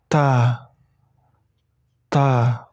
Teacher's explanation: Jadi cara membacanya sedikit dikeluarkan angin di ujung lidah. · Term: huruf Ta